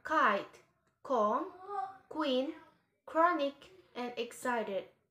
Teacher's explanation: K and G are velar. The back of the tongue is pressed against an intermediate area between the hard and the soft palate. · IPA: /k/